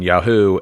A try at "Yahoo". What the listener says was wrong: You put a little emphasis on that who, but it's okay.